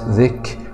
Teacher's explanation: كاف سكون مع الهمس